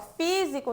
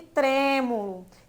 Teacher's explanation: físico tá um som mais aberto diferente de tremo que eu falo com o som mais fechado